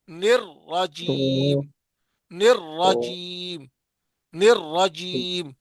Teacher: نر پہ اکثر لوگ گول ہونٹ کر دیتے ہیں، نہیں کرنا